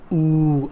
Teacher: We make our lips rounded, oo, like in the word cool. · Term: wow